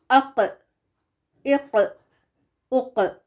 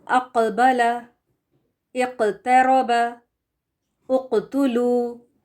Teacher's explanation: قاف زبان کی جڑ اور اس کے مقابل تالو کے سخت حصے سے نکلتا ہے